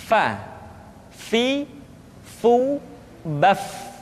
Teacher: diucapkan dengan menyentuhkan ujung dua gigi seri kita bagian atas dengan bibir bawah bagian dalam Fa seperti kita mengucapkan huruf F di dalam huruf latin Fa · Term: huruf Fa